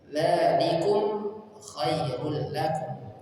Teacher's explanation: Dzalikum panjang 2 harakat. Dzalikum dibaca jelas, sukun ketemu kha. Dibaca jelas, namanya adalah idhar syafawi.